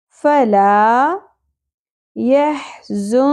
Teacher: فلا يحزنك وسط حلق سے ز شدت اور سیٹی کے ساتھ, نون ساکن پہ اخفا مع الغنہ, کاف باریک ہوگی, زبر کو زیادہ نہیں کھینچنا.